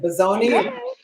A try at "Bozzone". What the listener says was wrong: Bozzone. We say the E.